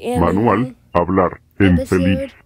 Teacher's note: The stress is placed on the last vowel.